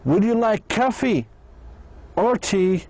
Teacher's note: But in either or question, the answer is just 1 item of the 2 from the question. So the speaker's voice, صوته, goes up on the first item and down on the second item. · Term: either or questions